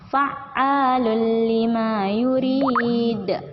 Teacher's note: A-nya di sini dipanjangkan 2 harokat baru masuk ke huruf lam.